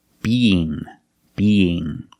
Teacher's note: But you have the ng where the back of the tongue is touching the back of the roof of the mouth